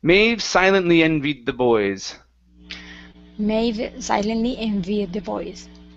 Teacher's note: so connect the D and the th here